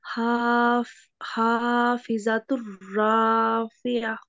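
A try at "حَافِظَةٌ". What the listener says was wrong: अच्छा सबाब आपने यहाँ पढ़ा खाफिजातुर तुर, ठीक है, ता और रा को, यहाँ आपने कायदा नहीं कोई बताया और पढ़ा आपने ऐसे मिला के।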